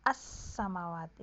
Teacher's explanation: kalau alif lam syamsiah kan namanya hilang ya menjadi misalnya menjadi as Samawa tulisannya Al samawat menjadi as